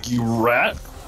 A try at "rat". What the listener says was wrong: Did you said, you said rat with like a hard R. You actually did. You're like, you rat.